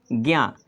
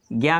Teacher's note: स्वर रहित ज और दूसरा है य तो ज स्वर रहित ज का उच्चारण स्थान क्या है ताल और य का उच्चारण स्थान भी ताल है इसलिए ज्ञा का उच्चारण तालू से होता है